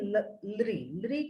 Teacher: लृ को हम लोग दंत से उच्चारित करते हैं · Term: लृकार